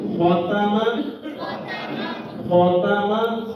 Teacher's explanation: خا موٹا تا باریک